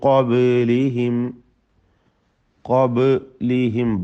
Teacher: ബാഇൻ്റെ സുക്കൂൻ ഖൽഖല നൽകി ശബ്ദം ചലിപ്പിച്ച് വ്യക്തമാക്കേണ്ടതാണ്. · മണിക്കലിൽ തഫ്ഖീമോട് കൂടിയാണ് ഉച്ചരിക്കേണ്ടത്. കാരണം ശേഷമുള്ളത് ഖാഫാണ്, ഇസ്തിഅലാഇൻ്റെ തഫ്ഖീം ചെയ്ത് ഉച്ചരിക്കേണ്ട അക്ഷരമാണ് എന്നതുകൊണ്ട്.